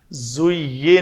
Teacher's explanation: تو اگر دونوں دانت آپس میں نہ ٹکرائیں تو وہ زا نہیں بلکہ وہ زال کی طرف بات چلی جائے گی۔ تو گویا زا کو ادا کرتے وقت دونوں دانتوں کا جوڑنا بہت ضروری ہے، اور اس میں شدت نہیں ہونی چاہیے، رخوت ہے، اس میں نرمی سے ادا ہونا چاہیے۔ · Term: زا کا مخرج